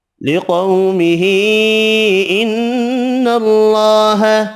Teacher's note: لِقَوْمِهِ إِنَّ اللَّهَ، یہاں بھی قاف حروف مستعلیہ پر پڑھیں گے، قو واو لین ہے، چھوٹی مد تین الف کی مقدار میں کھینچ کر پڑھیں گے، نون مشدد پر غنہ کرنا ہے، اللہ کا نام والا لام زبر کی وجہ سے پر پڑھیں گے